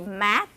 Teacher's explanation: the vowels are shorter when it precedes a voiceless stop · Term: duration difference